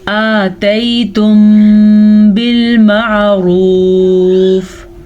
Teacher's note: میم ساکن کے بعد اگر حرف با آ جائے تو اخفاء شفوی کا قاعدہ ہوتا ہے. اس قاعدے کے حساب سے دونوں ہونٹ بند ہو جاتے ہیں اور غننے کی آواز پیدا ہوتی ہے. حمزہ کھڑی زبر آ مقدار اتنی لمبی ہوگی اور یہ یالین ہے، اسے ہم نرمی سے بغیر کھینچے پڑھیں گے.